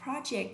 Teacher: Project, vì rất nhiều người đọc như thế này, nhớ nha, không đọc là pro mà đọc là pro, trọng âm sẽ lên thứ nhất